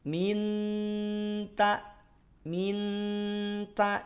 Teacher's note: tetap masih terdengar hanya saja sudah agak bergeser tidak minta minta kalau dibacanya minta Nun sukunnya berarti masih izhar Masih jelas